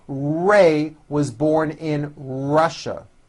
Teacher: notice how my lips come forward on all my RS and W's